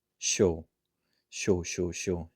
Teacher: when you have 시옷 plus English Y sound, it will become the SH sound, right? It would be technically 시 plus O equals 쇼.